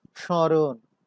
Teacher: যখন স্মরণ উচ্চারণ করছি তখন তার মধ্যে একটু অনুনাসিকতার সৃষ্টি হয়েছে, যার কারণে আমরা তালব্য শ এর উপরে চন্দ্রবিন্দু দিয়েছি নাসিক্যতার চিহ্ন হিসেবে।